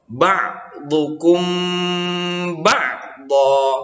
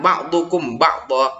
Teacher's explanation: Jadi huruf mim mati itu dimasukkan ke dalam huruf ba yang ada di depannya dengan berdengung. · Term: ikhfa safawi